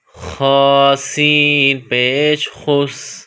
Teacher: خ کا مخرج گلے کا وہ حصہ جو منہ کے قریب ہے، زور لگا کر اس سے خ کو نکالا جائے گا